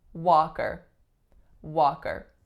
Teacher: The strongest syllable is the first syllable. The sound that it makes is ah, tense back low vowel.